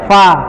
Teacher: Kalau fa, bibir bawah ketemu sama gigi atas